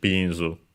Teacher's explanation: Accent on the first syllable, so luckily regular, just like in English